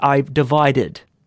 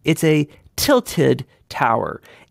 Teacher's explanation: of Pisa it tilts it's a tilted tower in those cases we're doing the extra stress on the Ed simply because we already had a D sound in there